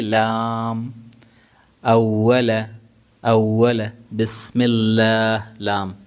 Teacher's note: لام پوری زبان کا استعمال, زبان چاروں طرف منہ میں پھیل جائے گی